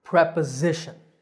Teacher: notice that the s is pronounced as a z sound the stress is on the third syllable z preposition the next